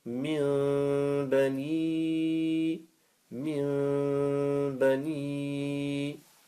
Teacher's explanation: Iqlaab is after, if after noon sakin or tanween you see a ba, change the noon sakin and tanween for a mim. Lengthen for 1 second with nasal sound. The lengthening for 1 second with the nasal sound, you can say and make ghunna.